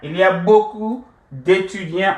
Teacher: Raise our voice a little bit towards the end. The intonation.